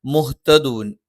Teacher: ഹ തൊണ്ടയുടെ താഴ്ഭാഗമാണ്. ത നാവിന്റെ അറ്റം മേലെ മുൻപല്ലിന്റെ മുരട്ടിലാണ്. നാവിന്റെ അറ്റത്തിന്റെ താഴ്ഭാഗം ചെറുതായിട്ട് ഒന്ന് മുൻപല്ലിന്റെ പള്ളയിലേക്ക് ചേർന്ന് നിൽക്കും. · മ രണ്ട് ചുണ്ടും തുല്യമായി അടച്ചു വെക്കണം.